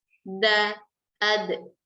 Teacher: Huruf dal dalam bahasa Arab itu maju ke depan, di tempat tumbuh gigi seri. Da, ad, bukan ada.